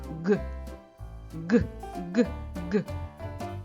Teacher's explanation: звук Ґ приголосний твердий дзвінкий · горло вібрує ми долоною відчуваємо вібрацію голосових зв'язок